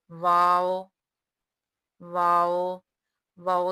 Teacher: वाओ दोनों होंठों से अदा होता है कि दोनों होंठों को गोल करें, लेकिन दोनों होंठ आपस में मिलने ना पाएं